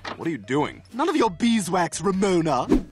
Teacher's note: this expression, none of your beeswax, it almost sounds like one word. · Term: connected speech